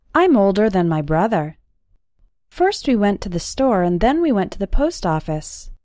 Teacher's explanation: In this sentence, the word then means in that case. In spoken English, than spelled with an A and then spelled with an E often sound exactly the same when speaking fast.